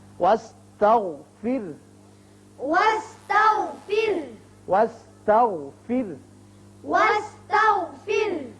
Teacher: یہاں وقف کرنا بہتر ہے، ہاں ساکن ہو جائے گا، اور یہاں را بھی باریک ہوگا اس لیے کہ پیچھے زیر ہے